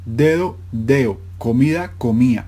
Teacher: la pérdida de la D intervocálica